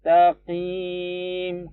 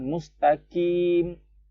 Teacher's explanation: qaf ya, agak di belakang sedikit.